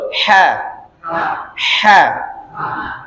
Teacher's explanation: itu ha tipis Tengah tenggorokan